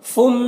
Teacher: فم میں ادغام ناقص ہو رہا، غنہ کے ساتھ میں پڑھیں گے